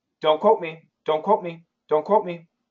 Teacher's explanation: So in daily English, you're not going to hear a diphthong.